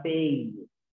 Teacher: Se da por la unión de primero una vocal abierta y luego una vocal cerrada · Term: diptongo decreciente